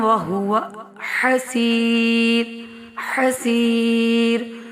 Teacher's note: حسیر یا مدہ کر کے پڑھ رہے ہیں اور را پہ ہم یعنی رک رہے ہیں تو یہاں پہ بھی باریک پڑھا جائے گا کیونکہ یا ساکن سے پہلے بھی ساکن ہے اس سے پہلے والے حرف کے نیچے زیر ہے.